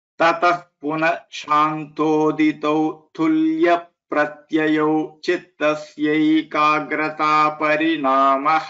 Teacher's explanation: So tul pra should get a stress here.